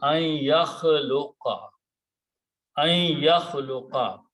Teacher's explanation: when noon and ya come together, noon sound becomes sound of noon gunna, idgham takes place, and we change this to a shadda.